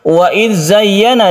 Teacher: Wa idz zayyana, di sini ada zal. Zal ini bukan qalqalah karena dia itu mempunyai titik dan dia tidak memantul. Wa idz zayyana, zayyana ada tasydid ya yang kita tekan ke ya-nya sehingga terasa sekali penekanannya itu.